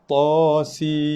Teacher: terus kepada bacaan mim berserta dengan tekanan kedua-dua bibir. Bibir kena kacip rapat, tekan, dengung 2 ke 3 harakat. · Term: idgham ma'al gunnah